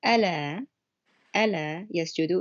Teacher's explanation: It's a lighter L sound, and it changes the meaning.